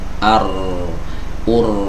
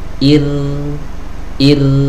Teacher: bagian tengah dan juga tidak ada penyempitan di tenggorokan lain halnya ketika dia dalam keadaan tebal ya maka di bagian tengah lidah ini ada cekungan dan juga terasa di sini tenggorokan agak menyempit Ar ur ya berbeda ketika di kasasrah ir ir ya tidak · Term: ro tebal